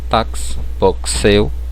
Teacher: Então no lugar da letra X é como tivesse um KSzinho ali